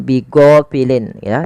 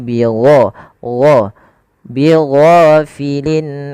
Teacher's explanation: Ghain panjangkan 2 harakat dan dia jangan dibaca dengan go, jangan bighafilin ya, tapi bigho, bighafilin amma.